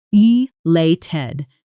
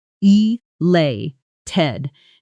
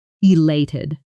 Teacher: Now notice the pronunciation here. The stress falls on the second syllable.